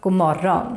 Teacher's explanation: We drop the D in god and we drop the G in morgon.